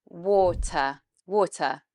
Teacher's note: that long or sound with the mouth coming in, shaped like an O shape, or. It's the same sound as in bought, horse, call, or.